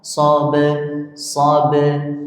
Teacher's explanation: Ba-nya tetap kita jaga menjadi ba sugroh, qalqalah sugroh.